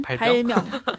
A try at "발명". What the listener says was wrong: 발명. 병이 아니니까